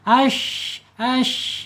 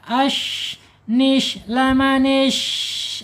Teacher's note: Di mana alisannya? Yaitu punggung lidah ya, yang tengah terangkat tetapi tidak seperti isti'la, ya terangkat saja ya, tidak menekan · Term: shin